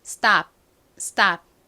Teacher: stop이 아닌 stop, stop 이렇게 쌍디귿처럼 발음이 되죠. 그리고 이 stop이라는 단어도 잘 보시면 모음이 딱 하나밖에 없어요.